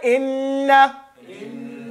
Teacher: the tongue is up and to the front, the ghunna in the nose